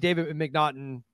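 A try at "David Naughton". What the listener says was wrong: No, it's just Naughton, right?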